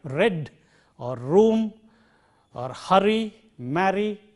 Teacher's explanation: this is a frictionless continuant row as we have in a word like red or room